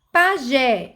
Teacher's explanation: Pajé, gé é a sílaba tônica, então eu chamo de oxítona